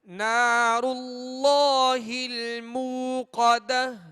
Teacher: قاف کو پر پڑھیں گے یا باریک پڑھیں گے دو نقطے والا قاف ہے یہاں جی پر پڑھیں گے اس لیے کہ حروف مستعلیہ میں سے